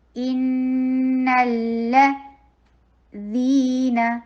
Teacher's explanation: نون کو لام کے ساتھ ملائیے اور لام کے اوپر تھوڑا ٹائم دینا ہے